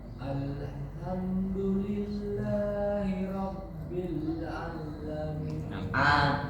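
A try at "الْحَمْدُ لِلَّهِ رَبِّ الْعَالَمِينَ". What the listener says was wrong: Jangan dimasukkan ke dalam huruf lam. Panjang saja. Rabbil alamin, bukan Rabbil alamin. Rabbil alamin.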